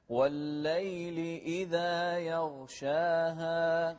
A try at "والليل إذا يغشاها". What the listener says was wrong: لا تقلقل الغين، يغشاها غلط.